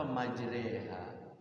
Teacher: Kan majreha kan bacaan fathah dibaca, kasroh tidak, fathah tidak, miring dibaca miring. A tidak, I tidak kan, tengah-tengah. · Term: imalah